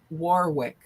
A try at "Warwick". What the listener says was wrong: Warwick. It's not Warwick. It's Warwick. It's with the second W is silent. Warwick. Yeah, Warwick.